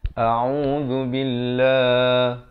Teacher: lafz jalalah dibaca nipis 2 harakat